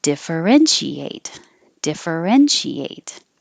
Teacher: it has five syllables and the stress is on the third syllables